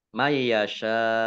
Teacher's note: nun sukun bertemu dengan huruf ya, bacaan idgham bi gunnah, masuk dengan mendengung. Mendengung ya, ditandai ya-nya ada tasdidnya. Shin fathah alif mat tabi'i, tetapi karena bertemu dengan huruf terakhir yang dibaca sukun, maka menjadi mat arid lis sukun.